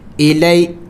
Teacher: حروف لین میں سے ہے اس کو جلدی پڑھنا ہے، لمبا نہیں کرنا ہے